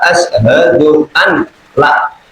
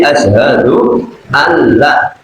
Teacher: nun mati ketemu lam itu tidak boleh berengeng karena itu idgham bila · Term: idgham bila ghunah